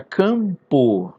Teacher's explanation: Por causa desse M. Esse M aqui, ele não é uma consoante. Na verdade, ele está aqui como um elemento nasalizador.